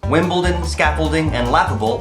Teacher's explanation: Wimbledon, scaffolding, and laughable all have an accent on the first syllable.